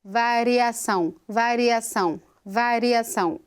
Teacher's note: No vibrante simples, por exemplo, nós temos o R, que é alveolar, de variação, variação, variação. Essa passagem do R bem rapidinha pela estrutura dos alvéolos.